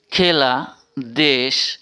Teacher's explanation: এ বর্ণের বিবৃত উচ্চারণের উদাহরণ